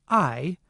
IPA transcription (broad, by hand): aɪ